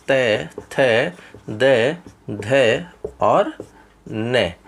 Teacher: क्यों? क्योंकि इन सभी का उच्चारण करते समय हमारी जो जिह्वा होती है वो दांतों को स्पर्श करती है, इसीलिए इन सभी का उच्चारण स्थान दंत कहा गया है।